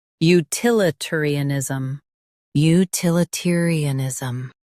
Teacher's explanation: Stress til and keep ter light.